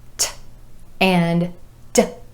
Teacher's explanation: t and d, both made with the tip of the tongue tapping the alveolar ridge behind the top front teeth